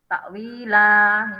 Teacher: Maksudnya waqaf berhenti. Takwilah ini walaupun fathah tain tetap karena berhenti ya dibaca la. Ini panjangnya 3 harokat.